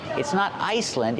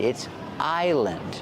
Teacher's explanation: remember the S is silent it's not Iceland it's Island